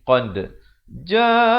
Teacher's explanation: Qul qad ja, dibacakan pantulan di sini. Qad ja'akum, izhar syafawi, sempurnakan saja bunyi mim matinya.